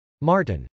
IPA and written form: mˈɑrtən (martin)